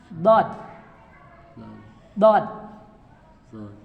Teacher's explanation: Nah kalau ini Pak, ini kan lidah ya Pak, pinggir lidah. Nah pinggir lidah yang kanan itu dikenakan ke gusi gigi atas. Ditempel dulu, dipampatkan sedikit baru dipecahkan. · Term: dod